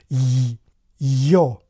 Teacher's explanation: This palatal type of sound, which is the most common type of Y-double-L in the Spanish-speaking world, often has some non-sibilant friction.